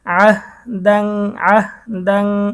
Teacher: আইন হা জবর আহ, দাল দুই জবর দান, আহ দাং দাং। এখানে ইকফার গুন্না হবে, তানবিনের পরে ইকফার হরফ ফা এসেছে, গুন্না সহ পড়তে হবে।